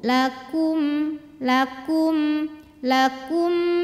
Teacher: damah monyong ke mim bibir sudah ke posisi biasa lakum lakum mim mati kalau tidak berhadapan dengan mim atau ba Maka jangan ditahan ya bacanya Cukup jelas saja bunyi m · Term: izhar